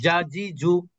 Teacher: এটা জিহ্বার মধ্যভাগ থেকে উচ্চারিত হয়, শক্ত করে উচ্চারণ করতে হয়।